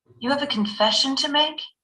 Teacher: But there's a rising intonation because you want to get the person's attention.